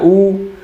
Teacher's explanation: तो आप ऊ उच्चारण करेंगे तो आपको लगेगा कि जीव थोड़ा सा पीछे को दब रहा है, ऊ, यानी जीव ऊ के समय पीछे को दब रहा है, यानी कि ऊ आपका पश्च स्वर होगा